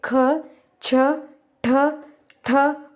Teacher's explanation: ಉದಾಹರಣೆಗೆ ಕಚ ಟ ತ ಗ ಕ ಜ ಡ ದ ಬ ಮಹಾಪ್ರಾಣಾಕ್ಷರಗಳು ಹೆಚ್ಚು ಉಸಿರು ಕೊಟ್ಟು ಉಚ್ಚರಿಸಲಾಗುವ ವ್ಯಂಜನಗಳು